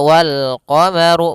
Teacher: Kemudian pada lafaz ru, ru-nya dibaca tebal karena dia huruf ra yang berharokat dhammah.